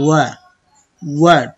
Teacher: প্রথমে ঠোঁট গোল হবে পরে ছাড়বেন